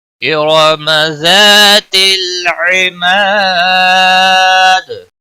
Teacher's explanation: را کو زبر کی وجہ سے پر پڑھیں گے